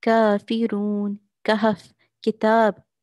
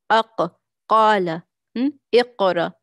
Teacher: ज़ुबान को मैं आगे से ऊपर उठा रही हूँ, तो ज़ुबान मेरी मोटी हो जा रही है, आवाज़ मेरी मोटी हो जा रही है। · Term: इस्तिआला